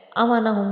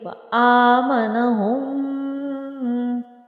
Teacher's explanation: حمزہ کے اوپر کھڑی زبر ہے تو اس کو ہم نے ایک الف کی مقدار کے برابر کھینچنا ہے، آمنہم نہیں، اس کو ہم نے تھوڑا سا اس کو کھینچ کے پڑھیں گے۔